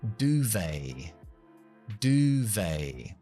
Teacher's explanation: que es con la U larga, du, y terminando con A.